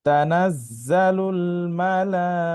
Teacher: মিম যাবর মা, লাম খারা যাবর লা, কিন্তু এটা দীর্ঘ টান হবে, কারণ হচ্ছে এখানে মোটা চিহ্ন আছে।